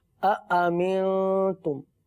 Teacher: پیارے بچوں یہاں پر دیکھیے أأمنتم ہے، اس کو آمنتم نہیں پڑھیں گے، أأمنتم دو حمزہ ہے اور دونوں کو تحقیق واضح کر کے پڑھیں گے۔ أأمنتم، آمنتم یا أأمنتم یہ ادائیگی درست نہیں ہے، درست ادائیگی ہے أأمنتم۔